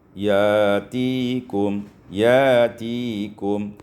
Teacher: ditukar Hamzah dengan Alif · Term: ibdal